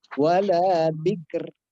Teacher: Ro adalah takrir, ia bergetar.